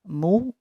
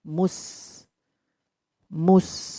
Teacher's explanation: jadi yang mencucu hanya mimnya saja, mu. Kemudian begitu sampai di sin, diusahakan bibir standar, tidak mencucu.